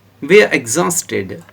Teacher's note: After T, ed is pronounced as id.